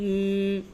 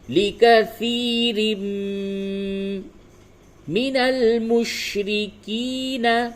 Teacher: لِكَثِيرٍ را کو میم سے ملائیں گے اور میم پہ تشدید ہے. اس جگہ پہ آپ کو غنہ بھی کرنا ہے، اور قاعدہ یہ ہے کہ تنوین کے بعد میم آ رہا ہے، ادغام مع الغنہ کرنا ہے.